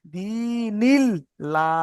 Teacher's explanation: এই আল্লাহর লামই এর আগের অক্ষরের নিচে জের এসেছে। নুনের নিচে জের আল্লাহর লামটা বারিক হবে মানে পাতলা হবে